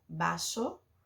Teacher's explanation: E vaso, com a letra B, pode ser simplesmente a pronúncia de vaso, com a letra V, porque em espanhol V tem som de B, então se escreve vaso, mas se fala vaso.